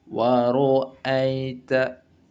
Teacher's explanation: Contoh ra dibaca tafkhim karena ra berharokat fathah